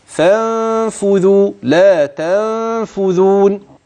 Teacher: يعني انها ستخف هذه النون اي تستتر ماشي الكلام كده وهذا الاستتار مع وجود غنه